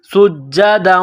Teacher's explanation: سین میں سیٹی کی آواز پیدا کرنی ہے ، سین کو باریک کرنا